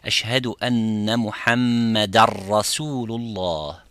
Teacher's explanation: Similarly, if you say ashhadu anna muhammadan, you don't say Muhammadan with the noon at the end. You say Ashhadu anna Muhammadar Rasulullah.